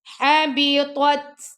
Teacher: تو کو موٹا پڑھیں گے، تا کو باریک پڑھیں گے اور تا پہ ہم حمز کریں گے